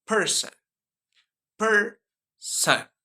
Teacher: The first syllable is per. In this word is stress syllable. So it will be longer and higher in pitch than the second syllables, and that is son.